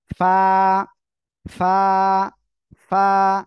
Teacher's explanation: নিচে ঠোঁটের পেট সামনের উপরের দুই দাঁতের আগার সঙ্গে লাগাবেন, লাগিয়ে হালকা বাতাস বের করবেন, বের করে উচ্চারণ করবেন।